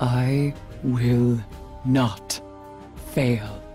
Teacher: sonically that just put it in a low register for me